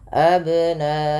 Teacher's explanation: Kemudian pada lafal abna'ahum ada ba sukun, yang dimana ba sukun ini bila ia sukun atau mati dihukumi dengan bacaan qalqalah, karena ada sifat yang melekat pada huruf ba yaitu qalqalah, yang dimana memantul ya bunyinya. Maka tidak dibaca dengan abna'ahum, tapi harus ada pantulan abna'ahum, tapi tidak pula dibaca dengan abna, menambahkan hamzah pada lafal ba yang disukunkan, karena dia salah, karena kalau ditambah nanti menambah huruf. · bagaimana cara memantulkan qalqalahnya adalah dibunyikan ya, tapi dia tidak putus dan tidak tertambah hamzah